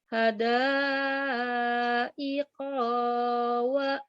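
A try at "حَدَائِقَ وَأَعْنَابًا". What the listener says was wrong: Ada koknya pendek. Hadaiqo.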